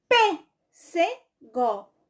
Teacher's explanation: a forte, a mais forte, é justamente a antepenúltima. Não é a última, não é a penúltima, é a antepenúltima.